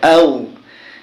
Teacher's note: ওয়াকে ঠোঁট গোল করে বলতে হয়